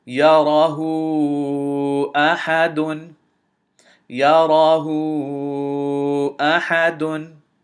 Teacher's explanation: Notice, because of this hamza immediately following the dhamma and the waw, because this is a mad and immediately following it, immediately after it is a hamza, this mad has to be or should be extended to 4 counts